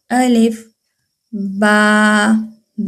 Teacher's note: با ادا ہوتا ہے دونوں ہونٹوں کے تر حصے کو ملانے سے · نہ آ کو کھینچ رہے ہیں نہ لام کو کھینچ رہے ہیں